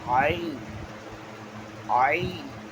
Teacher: آئین یہ حلق کے بیچ سے ادا ہوتا ہے